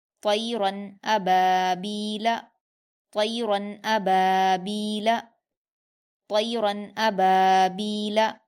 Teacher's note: تو یہاں را کی دو زبر کی تنوین کے بعد حمزہ آیا ہے، یعنی حروف حلقی میں سے حمزہ آیا ہے، اس لیے ہم را کی تنوین کی آواز کو ظاہر کر کے بنا غنہ کے جلدی پڑھیں گے